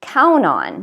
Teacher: you should take some out and count on now notice that count on we actually stress the verb count so instead of stressing the particle we actually stress count